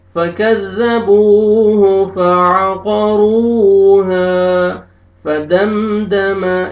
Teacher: یہاں پہ میم ساکن کا اظہار ہے, جلدی پڑھیں گے